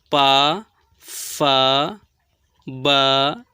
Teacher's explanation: दोनों ओठ सट रहे हैं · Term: ओष्ठ ध्वनि